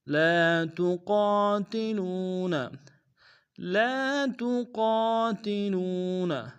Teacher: وما لکم لا تقاتلون، لا تقاتلون، لام الف مدہ ایک دائیں میں کھینچیں گے، قاف کے ساتھ الف مدہ، قاف کو موٹا ادا کریں گے، الف مدہ کو ایک دائیں میں کھینچیں گے، لو میں واو مدہ اس کو بھی ایک دائیں میں کھینچیں گے۔